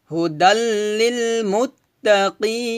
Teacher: মধ্যে আরজি 3 আলিফ টেনে পড়তে হয়